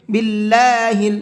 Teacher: اللہ کے لام کو باریک کر کے پڑھنا ہے، باللہ نہیں پڑھنا ہے بلکہ باللہ، اس لیے کہ اللہ کے لام سے پہلے زیر ہے۔